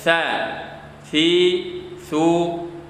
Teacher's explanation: ujung lidah juga ujung lidah yang menempel ke gigi seri atas · tidak digigit namun menempel ke ujung gigi seri atas, tidak mengapa walaupun tidak menempel ke gigi seri bawah. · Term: mahraj